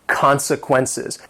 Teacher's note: This word has 4 syllables and the stress is on that first syllable.